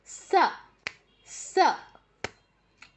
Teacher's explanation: জিউভার সামনের অংশ উপরের পার্টির দাঁতে টাচ করে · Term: দন্তস